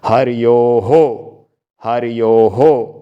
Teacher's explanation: ओ की आवाज आ रही है ना बाद में तो ह पे भी ओ की मात्रा लग जाएगी